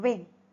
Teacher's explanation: Next bilabial sound is W as in when two lips are rounded to produce the sound ooh and suddenly ah the lips are stretched. The soft pallet is also raised to shut the nasal passage of air. · So, W is voiced bilabial semi- vowel.